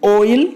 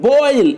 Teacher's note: The glide for this diphthong begins near the back half open position and moves in the direction of E. Oi is a glide from back half open position to front just above half closed position.